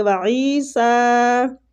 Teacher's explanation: وعیسیٰ، عین کو کھینچیں گے. یا مد ہے، سین کے اوپر کھڑی زبر ہے تو اس کو بھی کھینچیں گے